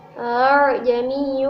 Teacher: Kemudian pada lafaz A'jamiyun adalah bacaan tashil yang artinya membaca hamzah yang kedua di antara hamzah dan alif